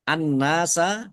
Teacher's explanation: tukallimunasa kafnya dibaca dobel ada tasdidnya ditekan dan ditahan tukallimunasa annasa alif lam syamsiyah karena tidak dibaca langsung masuk ke huruf berikutnya yaitu nun